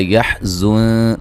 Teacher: نون ساکن کا باریک اخفا ہے